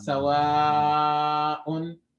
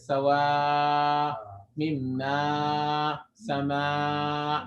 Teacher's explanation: Obviously, all sounds come from your vocal cords, but specifically, main emphasis of alif is just in the emptiness of your mouth. So an alif is pronounced from the emptiness of the mouth.